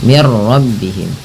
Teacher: Nah, karena di sini mati bertumrah langsung saja diidgamkan. Idgham itu memasukkan bunyi nun ke ro sehingga bunyi nunnya sehingga bunyi nunnya tidak terdengar lagi. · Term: idgham bila gunnah